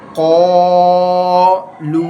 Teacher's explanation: کا نو، قاف الف زبر قا، لام واو پیش لو، قالو، اس میں قاف کو پر پڑھیں گے، یہ حروف مستعلے میں سے آتا ہے